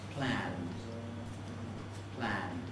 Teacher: The D at the end is really very weak, and of course it's not entirely voiced. We don't say planned, but plan.